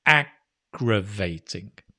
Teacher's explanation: notice with again the stresses on the first syllable